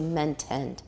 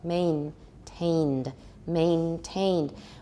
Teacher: in taiwan you'll probably simplify the the diphthong into a monophthong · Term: full diphthong